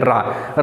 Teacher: प्रकंपित रा कहा जाता है, प्रकंपित जैसे रा बोलते हैं, रा बोलते समय हमारी जीभ लहरा जाती है। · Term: प्रकंपित वर्ण